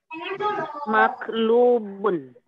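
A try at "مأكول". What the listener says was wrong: Akar katanya akala. Berarti ujungnya harus L tuh, Bu. Akala. Nggak ada ba di situ.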